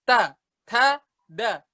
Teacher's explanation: Kalau huruf ta, dia ngeluarin angin. Dia tuh huruf hamas namanya.